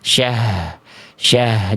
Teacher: H-nya harus betul-betul terasa dari pangkal